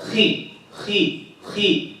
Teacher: even when the kha has kasra, it's still heavy